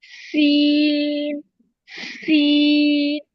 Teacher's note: जबान की नोक और दोनों दांतों के अंदरूनी किनारों से अदा होते हैं सीन। सीन में सीटी की आवाज भी पैदा होती है।